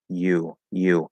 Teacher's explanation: the fully pronounced word you is ye the y sound plus an oo